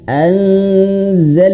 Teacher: Kemudian an tahan zalna. Awas huruf lam di sini tidak boleh memantul ya.